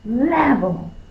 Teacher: so you're forceful with the first syllable that means that's the accented syllable or stressed